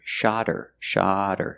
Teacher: if I link the words, then the H is silent